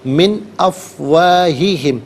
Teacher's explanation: من میں نون ساکن کے بعد آپ دیکھیں افواہی میں حمزہ آ رہا ہے، تو حمزہ حرف حلقی، تو نون ساکن کو اظہار کے ساتھ پڑھیں گے، یہاں غنہ یا اخفا نہیں کریں گے